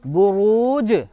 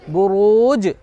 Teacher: इसमें जीम पर तशदीद है और जीम हुरूफ कलकला में से है, इसलिए इस पर कलकला हो रहा है। असल में ये था बुरूजी, कुरान के अंदर आता है वस्समाइ ज़ातिल बुरूजी, जी था, उसको वहाँ पर आयत की वजह से साकिन कर दिया गया।